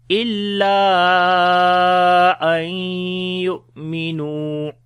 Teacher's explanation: on the hamza we make a jerk sound. Nu we long due to waw madda.